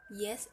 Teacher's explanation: Lidah itu terangkat ke langit-langit keras, tapi tidak terlalu dekat juga, atau disebut dengan palatal